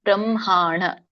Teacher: ಸೊ ನಮ್ಮ ಎದೆಯಿಂದ ಆ ಹ ಉಚ್ಚಾರಣೆ ಆದಾಗ ಮೊದಲು ಮ ಹೇಳಿ ಆಮೇಲೆ ಹ ಹೇಳಿದಾಗ ಮಾತ್ರ ಎದೆಯಿಂದ ಉಚ್ಚಾರಣೆ ಆಗುತ್ತೆ